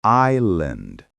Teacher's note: Island. Many learners pronounce the S, but it's silent.